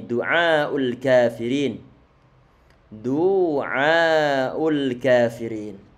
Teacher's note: bagian Alif yang sebelumnya fathah berarti bacaan Mad setelahnya ada Hamzah Berarti ada bacaan mad wajib yang panjang nanti minimal 4 harokat maksimal adalah 6 harokat